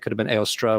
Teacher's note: So you have Eostre, could have been Eostra with a schwa at the end